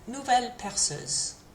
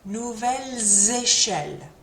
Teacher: if there's a vowel that comes at the start of the next word, then that S does get pronounced, although it gets pronounced kind of like a Z again. It's that same similar liaison Z there.